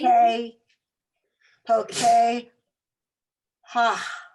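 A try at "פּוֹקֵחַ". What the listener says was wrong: That's one of those crazy ones. You put the ach instead of ha, you do ah. Po K ach.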